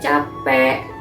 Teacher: penggantian diftong AU dan AI dengan O dan E